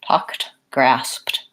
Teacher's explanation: the words talked or walked they really have just a T sound at the end rather than anything like a D